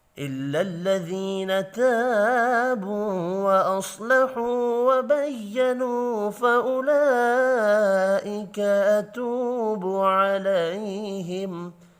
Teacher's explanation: الف مدہ، واو مدہ اور پھر واو مدہ تینوں 1 الف کے برابر کھینچ کر پڑھے جائیں گے. صاد حروف مستعلیہ ہے، پر پڑھیں گے. واو مدہ یہاں بھی 1 الف کے برابر کھینچ کر پڑھی جائے گی.